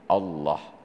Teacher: Padahal Allah itu dia harus tafkhim, dibaca harus ada bunyi O-nya.